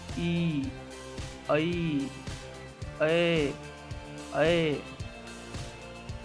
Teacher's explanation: इन स्वरों का उच्चारण जिह्वा के अग्रभाग से उच्चारित होता है। हमारे जीभ के अगले वाले हिस्से से इसका उच्चारण होता है, जैसे ई, ऐ, ऐ। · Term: अग्र स्वर